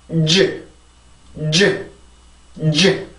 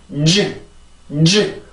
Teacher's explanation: 인위적으로 지금 하고 있는 소리를 만드는 거기 때문에 G 이렇게 발음이 되는 거고 이 발음은 그렇게 해서 내가 일부러 만들어내는 소리가 아니라 혀가 붙었다가 떨어지면서 만들어지는 자연스러운 소리란 말이에요